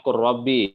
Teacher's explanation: Jadi lam fi'ilnya dia dibaca dengan idgham ya.